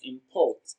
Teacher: Import is pronounced and broken down into syllables as import. Port receives the stress. It is pronounced louder and longer.